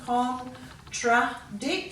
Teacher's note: Contradict, so just remember that's a TR there. It's not a ch sound, it's a tr sound.